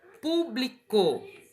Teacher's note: ela é uma palavra proparoxítona tá ó última penúltima e antepenúltima então antepenúltima sílaba é a mais forte